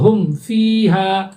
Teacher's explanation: اظہار شفوی کو بغیر غنہ کے جلدی پڑھیں گے، غنہ اس میں نہیں ہوگا۔ جیسے اگزامپل آپ دیکھیے، ہم فیہا، تو یہاں دیکھیے میم ساکن ہے، اس کے بعد فا آ رہا ہے، تو ہم اس کو کلیئر بولیں گے ہم فیہا، ہم اس طرح سے غنہ نہیں کریں گے، ٹھیک ہے۔